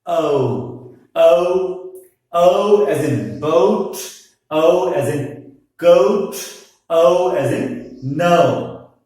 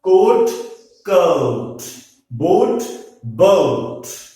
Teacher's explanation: The first element is neutral as in about, and the second one is U as in bull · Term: diphthong